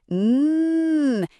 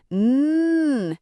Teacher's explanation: The sound N is a nasal sound which means the air comes out of your nose. It is a long steady hum. N. It feels a bit buzzy.